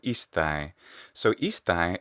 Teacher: in rustic Latin, the non-urban Roman Latin, rustic Latin, there's actually a common pronunciation of I as e